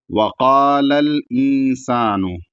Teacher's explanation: بڑا قاف ہے، ایک الف کے ساتھ کھینچا جائے گا کیونکہ اس کے بعد الف ہے